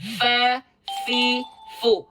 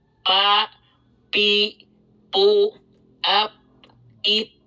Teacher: Bagi yang masih salah menulis F menjadi P, ingatlah bahwa yang bersentuhan bukanlah bibir, melainkan ujung gigi seri atas dengan bagian dalam bibir bawah